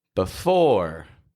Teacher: get that clear contrast between the weak B and the strong ending for every word that I list off here